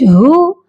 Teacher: ہا کی آواز سینے سے آئے گی